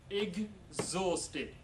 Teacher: exhausted is pronounced ig, not ik. Exhausted. A g and a z sound.